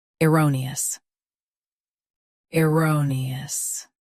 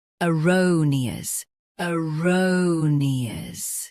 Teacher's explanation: US starts with er UK starts with uh